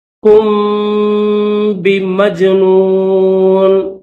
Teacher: وما صاحب، صاحب کم، کاف کے بعد میم ہے اور میم کے اوپر جزم ہے اور اس کے بعد یہ با ہے، تو یہاں پر میم کو با کے ساتھ ملا کر پڑھیں گے غنہ کے ساتھ